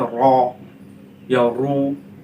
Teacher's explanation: रा पर अगर ज़बर या पेश हो तो रा को हम मोटा करके पढ़ते हैं, पुर करके पढ़ते हैं